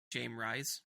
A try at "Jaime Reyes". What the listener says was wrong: Oh, Jaime Reyes. No, the J is silent.